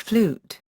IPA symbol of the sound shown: u